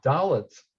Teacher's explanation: Dalet is definitely correct with a T sound at the end, not a D sound